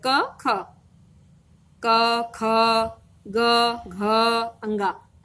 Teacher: आप देखेंगे कि क में कम समय लगा, ख में ज्यादा लगा, ग में कम समय लगा, उसी के हिसाब से घ में ज्यादा लगा और अंगा में कम समय लगा।